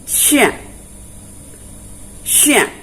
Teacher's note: Kemudian selanjutnya yang perlu kita pahami juga adalah yang payah, tempat keluarnya huruf Sya. Ya, jadi kalau huruf Sya itu keluarnya dari tengah-tengah lidah, tepat pada langit-langit atas. Jadi bunyinya menjadi Sya.